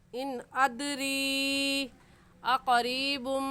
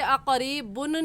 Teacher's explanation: تنوین کے بعد حروف یرملون میں سے میم آگے ہے تو یہاں غنہ کرنے کے ساتھ ساتھ ہم ادغام بھی کریں گے